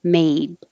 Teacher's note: If the final sound is voiced, made, is voiced, then the vowel will be a little longer, made. So mate, made, mate, made.